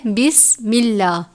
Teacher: لام سے پہلے یعنی میم کے نیچے زیر ہے، بسم اللہ، میم کے نیچے زیر ہے اس لیے ہم اس لام کو باریک پڑھتے ہیں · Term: ترقیق